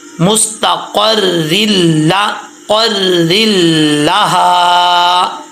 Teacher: را کے نیچے زیر ہو را بریک پڑھا جاتا ہے